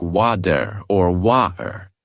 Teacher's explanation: In American English, it is often pronounced like water or water, where the T sounds almost like a quick D.